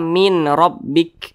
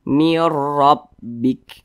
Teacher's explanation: itu dengan cara memasukkan kemudian juga tidak berdengung apa yang dimasukkan Nah jadi nun sukun ini dimasukkan ke huruf Ro · Jadi nun sukun ini dimasukkan ke huruf ra. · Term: Idam bilunah, idgham bila gunnah